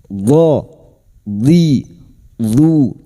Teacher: huruf dhad tapi lidah nempel pada gigi geraham atas, boleh kiri boleh kanan